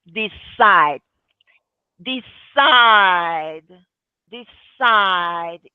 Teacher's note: There's a vibration, right, in your throat at the end of the d. Decide. Because that E over there doesn't sound. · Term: voiced